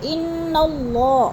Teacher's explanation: انا کی نون مشدد ہے، سختی سے جماؤ کے ساتھ پڑھیں گے، اور ان اللہ، اللہ کو پر کر کے پڑھیں گے۔